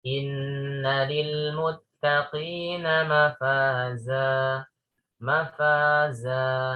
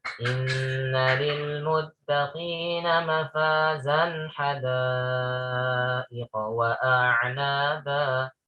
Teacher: Nah, itu 2 harokat. Za asalnya mafazan ya, fatatain. Namun ketika waqaf maka dipanjangkan ya menjadi 2 harokat, dan itu yang disebut dengan mat iwad. Ya. Dan ini menjadi catatan bahwasanya mat iwad itu berlaku hanya saat waqaf saja.